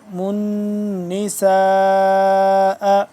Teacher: میم نون پیش من کیونکہ نون ہے یہاں پہ مشدد من نساء لمبا کریں گے 4 سے 5 الف کے برابر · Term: مد